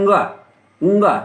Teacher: ये गले से बोला जाता है, कंठ से बोला जाता है, इसलिए इनको कंठव्य कहते हैं